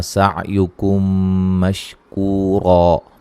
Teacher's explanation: میم ساکن کے بعد میم متحرک آ رہی ہے، یہاں میم ساکن کا ادغام ہو رہا ہے، غنہ کریں گے